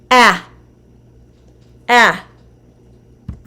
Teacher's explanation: held in the mouth when forming the short a sound so it is pushed further forward and lower in the mouth than any other vowel sound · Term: short a vowel sound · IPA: /a/